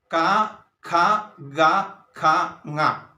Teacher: പറഞ്ഞു ഈ ശബ്ദം ആദ്യമായി തടയുന്നത് നമ്മുടെ തൊണ്ടയിലാണ് അപ്പൊ ആ തൊണ്ടയിലായിട്ട് തൊണ്ടയിൽ തടഞ്ഞ് വെളിയിലേക്ക് വരുന്ന ശബ്ദത്തെ നമ്മൾ അതായത് കണ്ഠത്തിൽ നിന്നും ഉത്ഭവിക്കുന്ന ശബ്ദത്തെ കണ്ഠം എന്നാണ് പറയുന്നത് അപ്പോൾ കണ്ഠം എന്ന് പറയുന്നത് ക ഖ ഗ ഖ ങ്ങ ഇവയാണ് കഠ്യം